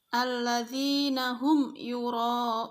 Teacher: bahwa izhar artinya jelas dan syafawi artinya bibir maka sudah pasti cara membaca izhar syafawi yaitu dengan jelas di bibir dan di mulut tertutup